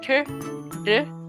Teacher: your T's and D's and R's tend to be what we call retroflex, where your tongue curls a little bit